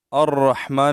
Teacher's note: मीम के ऊपर कड़ी जबर है और इसको एक अलिफ की मिक दार हम खींचें और नून को हमने यहां साकिन किया वक की वजह से